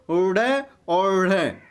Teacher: जिनके उच्चारण में जीभ पहले ऊपर उठकर मूर्धा पर स्पर्श करे और फिर झटके के साथ नीचे आए